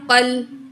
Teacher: قاف کو موٹا پڑھا جائے گا، الف کو نہیں پڑھا جائے گا، قاف کی دو زبر کو لام تشدید سے ملا کے پڑھیں گے۔